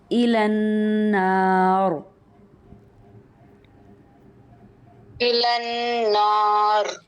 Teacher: اگر ہم یہاں ساکن نہیں کرتے تو را باریک ہوگا، اگر ہم ساکن کرتے ہیں تو را پر ہوگا